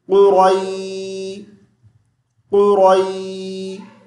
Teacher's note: یہ جو یا ساکن ہے یہ حرف مدہ نہیں ہے، حرف لین ہے۔ حرف مدہ اس ٹائم ہوتی ہے جب یا ساکن سے پہلے کسرہ زیر ہوتی۔